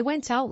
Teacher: move the T the T sound from the end of went to the front of out so it becomes when out